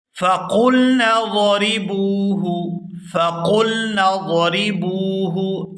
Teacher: فَقُلْنَا ضَرِبُوهُ، فَقُلْنَا ضَرِبُوهُ، یہاں با کو واو ساکن کے ساتھ ملائیں گے تو کھینچ کر ادا کریں گے کیونکہ یہ واو مدہ ہے